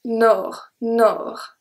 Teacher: So the O here is a closed O because we have the R after that comes and close the sound. So it's O. Nord.